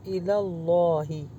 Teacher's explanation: اللہ کے نام کو پر کر کے پڑھیں کیونکہ لام سے آ رہا ہے زبر کے ساتھ